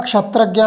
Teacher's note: उसमें आधा क और शा मिला होता है, मूर्धन्य शा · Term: संयुक्त व्यंजनक्षा